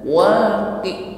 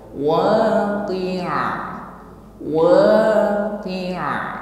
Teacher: Huruf ain sukun maka tampak di sini sifatnya yaitu tawassut, ya, ada suara yang mengalir, tidak tertahan sebagaimana huruf hamzah